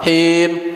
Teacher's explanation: Ketika nyebut kasrohnya itu jangan agak ke e deh, jangan ngambang ke e.